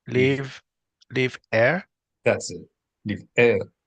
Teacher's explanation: We need to make a break sound, the glottal stop.